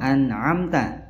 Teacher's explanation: nun sukun bertemu ain, nunnya dibaca jelas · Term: idhar halqi